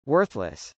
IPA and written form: wˈɝθləs (worthless)